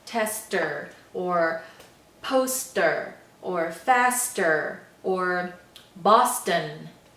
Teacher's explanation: this word tester or poster or faster or Boston okay so those all have s T sounds in the middle but they sound just like an initial s T sound